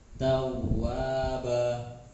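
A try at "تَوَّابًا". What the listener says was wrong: Kurang ditekan. Tawwaba.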